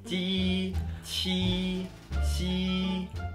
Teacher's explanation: Ini bagian tersulit pinyin。汉语的声母二。鸡七西之吃诗日滋滋滋。Baris pertama dilafalkan dengan permukaan lidah bagian depan yang menyentuh atau mendekati langit-langit keras